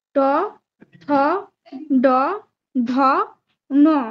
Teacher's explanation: উচ্চারণ স্থান হলো মূর্ধা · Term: ট বর্গ